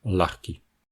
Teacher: le /g/ s'est transformé en /x/